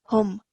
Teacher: you did not stay on the sound of meme sakin for too long, which was perfect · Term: clear pronunciation meme sakin